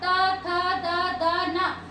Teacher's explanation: त वर्ग का उच्चारण स्थान आप बिल्कुल भी नहीं कर सकते हैं दंत को स्पर्श किए बिना